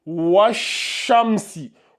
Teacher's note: tu passes du waw directement à la lettre suivante. Donc, ça se lit washamsi. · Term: lettre solaire